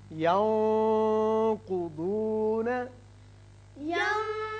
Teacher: یہاں اخفاء کی آواز تھوڑی سی موٹی ہوئی